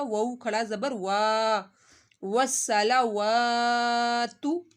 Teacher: واو کے اوپر کھڑا مادہ ایک الف کے برابر کھینچا جائے گا